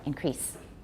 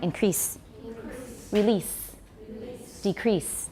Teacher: there's no Z it's voiceless